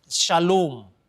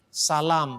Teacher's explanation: Maka O panjang kadang-kadang berubah menjadi A panjang.